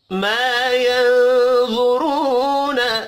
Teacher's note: ما الف مدہ ہے، ایک الف کے برابر کھینچ کر پڑھیں گے. یا نون ساکن کے بعد وا ہے، اخفاء حقیقی ہوگا، وا اور را پر پڑھے جائیں گے.